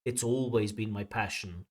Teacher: And the position of always instead of it has been always my passion, we should really use it's always been my passion. And the stress should fall on always there because it's a strong adverb.